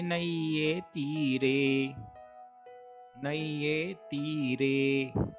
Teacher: यहाँ पर ए का उच्चारण दीर्घ न होकर ह्रस्व रूप से करना है।